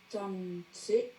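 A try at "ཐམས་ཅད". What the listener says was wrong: Tamche, tamche, tamche, il n'y a pas de C. Tamche.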